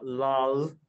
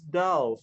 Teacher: if you have an N and an L go together, that L will turn into a D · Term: phonological operation